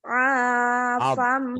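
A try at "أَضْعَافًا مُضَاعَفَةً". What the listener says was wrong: bukan as tapi ab. Ab, ab, ya do, ab, ab, ab, afam. Ab, afam. Ab, bukan as ya, tapi dod. Do, walau dodin.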